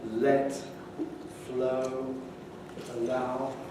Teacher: Clear L before a vowel